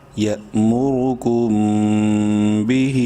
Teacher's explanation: کاف میم پیش کم، میم ساکن کے بعد با ہے، غنہ کریں گے اس میم میں، با زیر بھی، ہا کھڑی مد زیر ہی، ہا کو 3 الف کے برابر لمبا کریں گے